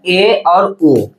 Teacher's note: half close मतलब अर्ध संवृत मतलब हाफ क्लोज मतलब मुख द्वार आधा बंद रहेगा